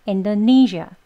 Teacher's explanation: 이 마지막 음절에 zh 하고 이렇게 진동을 많이 주진 않아요. 왜냐면 강세가 없고요. 떨어지는 음이에요. 그래서 zh 약간 샤보다는 지읒 소리가 들어간 zh 라고 발음을 해 주셔야 합니다.